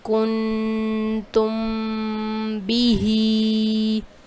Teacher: اب یہاں پہ بھی با جو ہے میم ساکن ہے، اس کے بعد حرف با ہے، یہاں پہ بھی ہم نے غنہ کرنا ہے